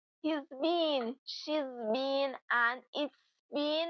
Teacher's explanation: has been, which reduces to z or s.